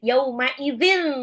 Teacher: zal ujung lidah seperti mau digigit